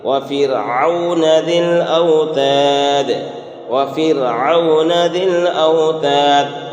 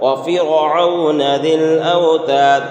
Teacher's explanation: را ساکن سے پہلے زیر ہے، اس لیے را کیا ہوگی؟ باریک ہوگی، یعنی پتلا کر کے پڑھیں گے، موٹا نہیں کریں گے